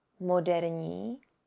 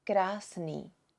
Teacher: The ending of moderní sounds a bit softer than the ending of krásný.